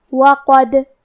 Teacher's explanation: ما لکم لا ترجون للہ وقارا وقد خلقکم اطوارا. کلمت وقد یہاں حرف الدال ہے اور اس پہ جزم ہے. یہاں ہمیں دال کو قلقلہ سے پڑھنا ہے، اور قلقلہ کا معنی ہے حرف ساکن کو ہلانا، تو ہم یہ حرف کو ہلاتے ہوئے یہ کلمہ کو پڑھیں گے.